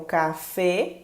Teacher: uma palavra como café, ela é acentuada no finalzinho, porque a última sílaba é a tônica e termina em vogal. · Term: aguda